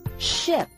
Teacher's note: put your hand on your throat it did not move or vibrate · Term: sh sound